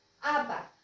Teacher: आंबा सायलेंट म घेतलेला आहे